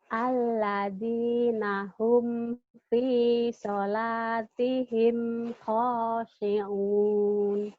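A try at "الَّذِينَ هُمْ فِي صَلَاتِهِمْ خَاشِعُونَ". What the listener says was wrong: alladzina hum fi salatihim shinnya nggak keluar. Khashi'un. Shinnya nggak keluar.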